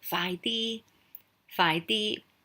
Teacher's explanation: so phi is just a middle tone it means fast